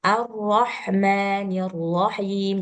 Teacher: jadi ketika mengucapkan ro itu jangan terlalu apa ya, jangan terlalu banyak ininya getarannya, getar maksudnya ya, tikor getarnya itu jangan terlalu banyak.